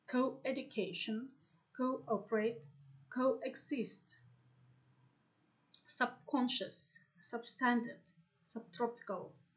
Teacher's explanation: other words with these prefixes have main stress on a syllable after the prefix